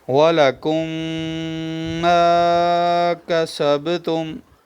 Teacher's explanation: ادغام شفوی ہو رہا ہے، میم ساکن کے بعد دوسری میم آئی ہوئی ہے۔